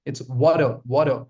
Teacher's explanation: There's no t sound coming in. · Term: light D